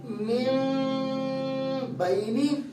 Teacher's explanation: آواز ناک میں جائے گی, ہونٹ ملیں گے نرمی کے ساتھ, سختی کے ساتھ نہیں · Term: اخفا شفوی